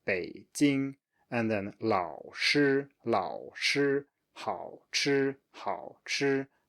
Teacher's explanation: you must make sure that you pronounce these with a low tone. You could not have a rise here. It's wrong if you do, and definitely don't have a rising tone in general.